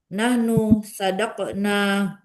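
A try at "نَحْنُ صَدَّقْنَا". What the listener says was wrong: Ya Bu, kalau ininya yang tasdidnya di dalnya ya Bu. Sadakna.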